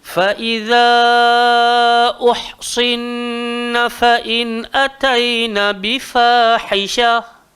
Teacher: atas nun yang pertama ada tanda sabdu, maka hukum dia wajibul gunnah, wajib dengung.